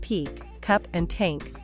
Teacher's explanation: English has also aspired consonants that appear before the accented vowel such as p k and t